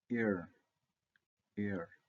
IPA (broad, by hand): ɪr